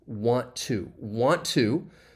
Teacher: you're going to reduce want to to just wanna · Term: reduction